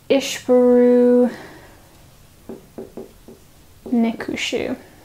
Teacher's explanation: the M of our ventive suffix has assimilated into the K of our dative to create a double K. And the M of the dative has assimilated into the sheen of the accusative to create a double sheen. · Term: assimilation